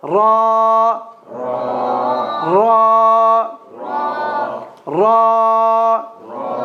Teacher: Here the ra is a slight roll ra. And the ra be careful from saying ra not not raw.